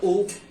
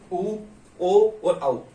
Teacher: जिन स्वरों का उच्चारण करते समय मुख गोल, अपने जो होठ है वो उनकी आकृति गोल हो जाती है, व्रत की तरह हो जाती है। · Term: व्रतमुखी